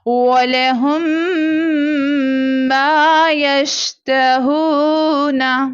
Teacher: اب یہاں پر ادغام شفوی ہو رہا ہے، یعنی دونوں میم کو میم ساکنہ کے بعد میم مشدد آ گئی، دونوں میم کو آپس میں ملا دیا جائے گا اور یہاں پر غنہ کیا جائے گا